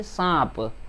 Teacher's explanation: हमने सांप कहा तो हवा नाक से भी मुंह से भी दोनों जगह से बाहर आ रही है, इसलिए यह सांप। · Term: अनुनासिक